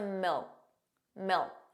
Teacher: So you put your tongue in the position of a K, milk, but you just don't push out that sound.